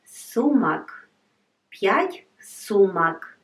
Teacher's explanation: If we take the ending, it will be сумк. It's not very good to pronounce, so we need to add one vowel between m and k.